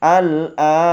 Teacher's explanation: Al-an, dibaca panjang 6 harokat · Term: mad lazim mukhaffaf kilmi